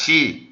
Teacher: Então aqui o C, na pronúncia reconstituída, é sempre como com som de casa. Só que na pronúncia eclesiástica, a gente fala o C como se fosse o C do italiano, como fosse um chiado, chi. Então aqui seria, no caso aqui é só diante de E e I.